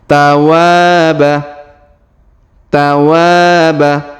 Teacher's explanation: huruf wa kita panjangkan dua harakat karena terdapat Alif di depannya